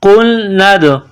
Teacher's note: دال ساکن ہے تو یہاں پر قلقلہ کریں گے